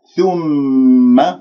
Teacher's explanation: ميم مشدد الغنة أكمل ما تكون، لا تنبرها تقول ثم عرضهم نبرتها، وهذا خطأ، أنت أتيت بالغنة غنة الميم المشددة، فما في داعي أنت تنبر.